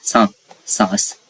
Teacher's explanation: सांस जब आप बोलेंगे नाक से बोलेंगे और ये अपने आप सा में मिल जाएगा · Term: चंद्र बिंदु